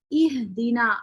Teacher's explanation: ہا میں آواز اور ہمس ایک ساتھ نکلتا ہے، جیسے کہ اہدینا آپ محسوس کریں گے کہ اہدینا ہا جب تک آپ پڑھ رہے ہیں تو جب تک آواز آپ کی ہا کی چل رہی ہے آپ کو اپنے گردن پہ وائبریشن فیل ہو رہی ہے، یعنی کہ آواز بھی ساتھ چل رہی ہے اور سانس بھی ساتھ ساتھ نکل رہا ہے.